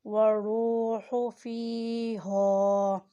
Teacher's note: والروح فیہا، را کو پور ادا کریں اور را کے اوپر پیش ہے ساتھ واو ہے، یہ حرف مدہ ہے، اسے کھینچ کر بھی ادا کریں۔ والروح فیہا، فا کے نیچے زیر اور ساتھ یا ہے، ہا کے اوپر زبر اور ساتھ الف ہے، یہ دونوں حرف مدہ ہے۔